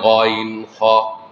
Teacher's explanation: 3 নম্বর মাখরাজ হলকের শেষ ভাগ হইতে উচ্চারিত হয় গইন খ।